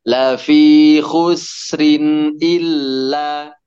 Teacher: Pas khusrin, sinnya tidak dipantulkan.